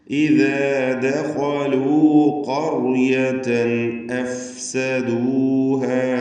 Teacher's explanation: ഇദാ ദഖലൂ എന്ന് പറയുമ്പോൾ ഖായിന് മാത്രമേ അവിടെ തഫ്ഖീം ഉള്ളൂ എന്നത് പ്രത്യേകം ശ്രദ്ധിക്കണം.